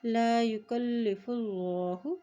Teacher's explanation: अल्लाह के नाम से पहले पेशा किया है तो अल्लाह का नाम यहाँ पर मोटा अदा किया जाएगा